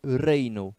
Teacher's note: Na palavra de número 6, a gente tem aí reino, vogal forte E, vogal fraca I, a vogal fraca não está acentuada, então nós temos um ditongo